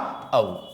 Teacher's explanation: इनका उच्चारण करते समय आपका जीभ का जो है पिछला हिस्सा, जीभ का जो है पिछला हिस्सा आपका कार्यरत कर रहा होगा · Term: पश्च स्वर